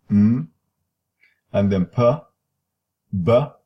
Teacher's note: It's a sound that uses two lips or is produced by two lips. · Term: Bilabial